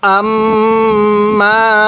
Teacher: আম্মা মিমের মধ্যে টান দিবেন